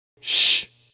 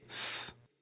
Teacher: There are no Greek letters that can make the sh sound. The closest we can get to the sh sound in Greek is s, the plain S sound. So we take the Greek letter sigma and it gives us the s sound.